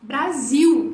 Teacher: em português a gente transforma esse L frequentemente em u e a gente fala Brasil né Tem um som de L